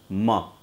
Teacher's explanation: मा में हमें नाक का भी सहारा लेना है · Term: नासिक